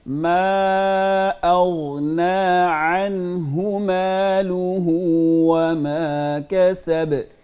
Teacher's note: غین پہ اغنا اس پہ کلکلا نہیں کریں گے, اس کو ہلانا نہیں ہے